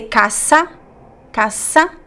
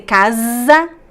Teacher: z sound in Portuguese like zebra there's a lot of vibration